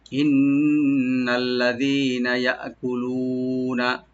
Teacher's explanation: ইন্না হামজাকে রাইট দিয়ে নুনটাকে তাসদিদ ওয়ালা নুন এখানে ডাবল করে গুন্না সহকারে পড়বেন